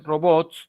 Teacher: En el caso de robots, su margen postnuclear o coda no es S, es TS, ¿no? Al haber sido pluralizado.